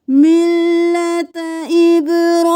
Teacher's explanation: با کو کلکلا کریں، را کو موٹا